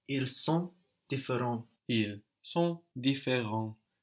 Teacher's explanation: différent has an S on the end, but we don't hear it. T and S are one consonant syllable, no, and that's silent on the end there.